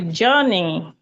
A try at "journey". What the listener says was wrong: It's not jaw. You're saying oh. Look at my mouth, please. You're saying oh. The sound is J, not jaw.